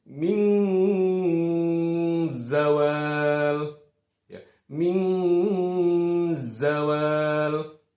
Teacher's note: ketika huruf nun mati bertemu dengan zai, di mana ini harus dibaca ikhfa, harus dibaca samar